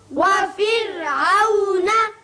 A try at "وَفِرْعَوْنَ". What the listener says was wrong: را کو باریک پڑھیے اس لیے کہ پیچھے زیر ہے وفرعون